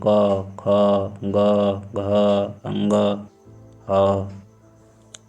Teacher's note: जब बोलेंगे क तो कंठ अंदर से आवाज़ आती है